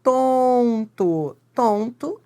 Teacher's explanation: Tonto, esse N nasaliza o O. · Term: vogal nasalizada